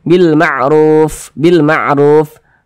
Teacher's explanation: kalau kita mengucapkan huruf Fa itu harus ada nafas yang mengalir ketika Kita mengucapkannya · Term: sifat hams